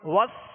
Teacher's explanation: سین کو سختی کے سیٹی کی آواز میں اور باریک پڑھیں گے